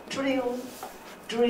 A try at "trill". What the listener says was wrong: It is not affricated. You should pronounce it as trill, drill. Trill, drill. And R sound. It is one of the most difficult sound for Japanese learners.